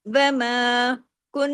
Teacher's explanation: نون ہے تشدید والا اس لیے ڈبل نون ہے، بڑا غنہ ہوا